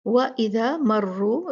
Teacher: را ہوگا ہیوی، یہاں پر موٹا مفخم پڑھا جائے گا